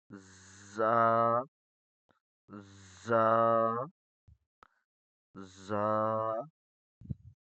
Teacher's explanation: زا میں سیٹی کی آواز ہوگی